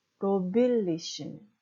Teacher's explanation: 뒤에 두 번째 리의 강세가 있는 게 아니라 뒤에서 세 번째인 로비의 강세가 있는 거죠.